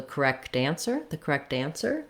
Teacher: when i link that correct ends up sounding a little bit more like a d and it sounds more like correct dancer correct answer so those